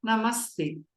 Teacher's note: a vogal permanece inalterada, o visarga vira essa sibilante correspondente à consoante surda, inalterada, como no exemplo de Namaha, mais T, Namastê.